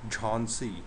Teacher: Jh, aspirated, jh. No English equivalent